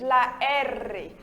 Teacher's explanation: O R em espanhol, a gente treme mais a língua, ele é mais forte do que o nosso português